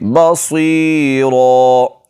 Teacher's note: صاد کو موٹا پڑھیں گے اور را کو بھی موٹا کر کے پڑھیں گے